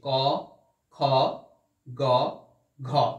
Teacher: গ ঘতে গলার কাছে চাপ বেশি মনে হচ্ছে